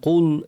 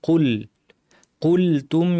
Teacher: কুলতুম কুল কাফ ভারী লাম পাতলা পুরাটা যেন ভারী না হয় কুল এরকম যেন না হয় কুল কুলতুম ইয়া মুসা লানু নুনের